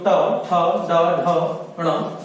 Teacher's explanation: ट, ठ, ड, ढ, ण, ये मूर्धा के द्वारा उच्चारित किए जाते हैं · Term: टा वर्ग